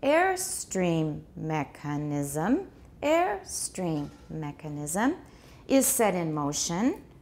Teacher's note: Air gets the tonic stress because this is a compound noun within a compound noun.